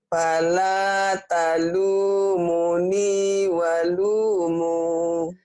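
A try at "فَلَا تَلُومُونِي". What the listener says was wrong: Fala talumuni walumu. Lagi ya madnya ya, harus pas. Fa, bukan wa tapi fa. Fala.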